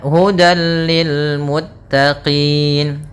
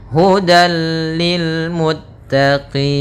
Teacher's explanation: Maka tanwin diapakan dimasukkan kepada huruf lam, tapi tidak boleh ditahan, tidak boleh hudal, akan tetapi hanya idgham saja, dan dia termasuk idgham kamil yang sempurna. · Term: idgham bila gunnah